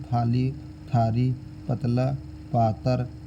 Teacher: इसमें अवधी की तरह ल का परिवर्तन र में होता है।